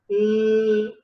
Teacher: For example, ta sound, if you take ta, when you say, so then there is no gap on the both sides of your tongue. But when you pronounce l sound, there is a gap on both sides. Such manner is called lateral.